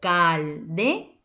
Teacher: Última sílaba, mayor fuerza de voz, sílaba tónica.